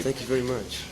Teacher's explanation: of course there's some of that characteristic almost stereotypical nasality